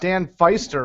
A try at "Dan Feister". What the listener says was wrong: It's pronounced Dan Feaster. It's a hard E. It's a hard E.